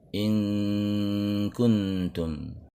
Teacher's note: Kita baca in dengan suara eng ke belakang, makhraj bersiap-siap di ka. In kuntum. Adapun kuntum pindah lagi suara ke ujung lidah di depan. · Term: ikhfa